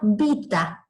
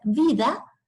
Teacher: El fonema T latino es sordo, sin embargo, por estar rodeado de dos vocales que son sonoras, se sonoriza y pasa a ser D. Por eso la palabra latina vita dio como resultado en castellano la palabra vida.